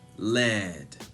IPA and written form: lɛd (lead)